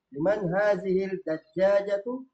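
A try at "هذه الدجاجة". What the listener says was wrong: Itu ad-dajjaja. Alif lam syamsiyah atau qamariyah? Syamsiyah. Berarti hazihid. Jangan hazihil. Liman hazihid dajjajatu.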